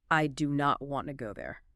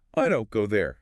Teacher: do not becomes don't, and want to merges into wanna. It just rolls off the tongue more easily.